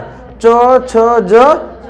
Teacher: स्पर्श के साथ साथ हवा जो होती है वो संघर्ष करते हुए निकलती है, रगड़ के निकलती है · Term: स्पर्श संघर्षी व्यंजन